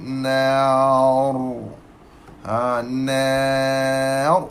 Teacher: Ra tebal sebab apa? Sebelum dia ada alif mat.